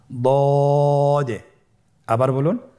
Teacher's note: দদ হারাফটি উচ্চারণ করার সময় অবশ্যই তিন আলিফ টেনে পড়তে হবে।